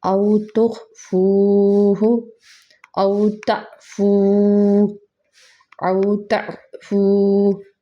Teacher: واو ساکن سے پہلے پیش آ رہا ہے تو کون سا لفظ ہے یہ، واو مدہ۔ واو مدہ کو ایک الف کے جتنا کرتے ہیں